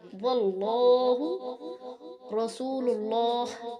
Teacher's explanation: لفظ اللہ کے نام سے پہلے زبر یا پیش ہو تو لام موٹا ہوگا، جیسے واللہ، یہاں دیکھیں اللہ کی لام سے پہلے حرف واو کے اوپر زبر ہے، اس لیے اللہ کی لام کو موٹا کر کے پڑھیں گے